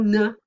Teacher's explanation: difference is the velum is lowered this time during production okay while the oral closure is held the air goes through the nasal cavity then the oral closure's released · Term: nasal stops